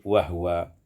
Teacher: wa huwa iskanul ha. Disukunkan ha menjadi wahwa.